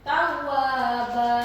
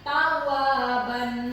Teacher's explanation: Tetapi karena di waqaf berarti sudah jelas ya, atau di akhir ayat berarti sudah jelas tidak ada huruf yang harus dihadapi oleh fathah tain dan alif ini ya. Berarti kalau sudah di akhir ayat begini terjadilah namanya mad iwad ya. Membacanya sepanjang 2 harokat.